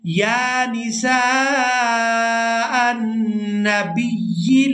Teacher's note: اب یہاں پر ہم نے حمزہ کو نون مشدد کے ساتھ ملانا ہے تو غنہ کے ساتھ ادا کرنا ہے